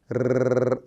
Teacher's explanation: र देखिए कितनी बार टैप कर रही है जीभ आपके ऊपर के तालु को, मूर्धा को। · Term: र ध्वनि